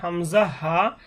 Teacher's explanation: হলক মানে কণ্ঠনালী, কণ্ঠনালীর শুরু হইতে উচ্চারণ হবে হামজা হা